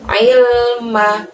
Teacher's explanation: Ail pakai ain kasroh di situ, kita keluarkan ainnya dari tenggorokan kita.